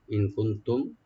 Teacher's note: কুনতুম কাফের পর যে নুন আছে এখানে আমরা ইখফা করব